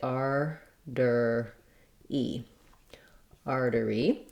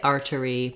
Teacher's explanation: two uh vocalic r sounds two between two vowel sounds and so we make it more as a flap